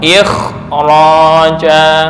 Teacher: huruf kha tidak diturunkan menjadi tingkat nomor 5, tapi ditingkatkan setara dengan ketebalan ra